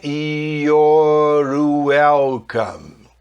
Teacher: E ao emendar your, porque eu mato o E do your, pego o R do your e junto com esse som de U do welcome.